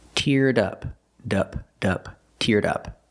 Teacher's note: Link the D sound, teared, to the next sound, in up. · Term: Link the sounds